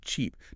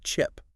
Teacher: A complex long vowel shrinks. So, the long e in a word like cheap doesn't have time to fully form. The jaw stays tight and it compresses into the short i of chip.